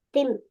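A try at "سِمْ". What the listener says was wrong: பல் ரெண்டு நேரா வச்சுக்கணும். சிம், சி சவுண்ட் வரணும். ஆ, ரெண்டு பல்லும் நேரா வச்சுக்கொண்டால் சி சவுண்ட் வரும். நாக்கு உள்ளுக்கு வைக்கணும். நாக்கு வெளியே வரப்படாது. நாக்கு வெட்டவா இப்ப அப்படி சொல்லி நாக்கு வெளியே வரப்படாது. நாக்கு உள்ளுதான் வைக்கணும்.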